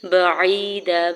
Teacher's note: با کے زبر کو جلدی سے ادا کرنا ہے، یا ساکن سے پہلے عین کے نیچے زیر یا مدہ ہو رہا ہے، 2 حرکت کھینچ کے ادا کریں گے